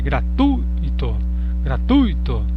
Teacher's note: Olha, perceba, gratuito apresenta um ditongo, inclusive decrescente, gratuito, gratuito. Então o U ele é entonado com maior força do que o I, por isso que é um ditongo decrescente, vogal antes da semivogal.